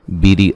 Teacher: را کو باریک پڑھیں گے, را کے نیچے زیر ہے